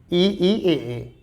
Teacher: अग्र स्वर क्या होते हैं जीभ के अगले भाग से बोले जाते हैं